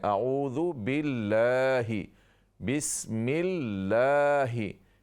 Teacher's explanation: ये लफ्ज़ अल्लाह का लाम जो है इस पर खड़ी ज़बर है ये अलिफ की तरह अदा करें